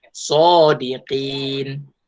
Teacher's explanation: Kita tidak bacakan barisnya lah. Jadi masa kita membaca sodiqina, kita tidak akan baca na, kita akan matikan. Sodiqin. Nun ni matikan.